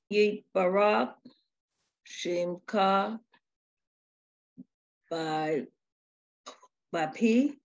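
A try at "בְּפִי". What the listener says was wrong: Buffy. So it's a fe, not a pe. Buffy.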